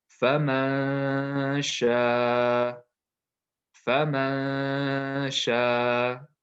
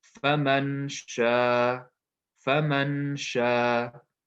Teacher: When I'm applying the ikhfa rule, my tongue is not touching the top part of the mouth. My tongue is not touching anything.